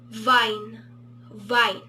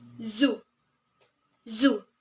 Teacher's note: there is a vibration at the vocal cords, and hence, these contain voiced consonants.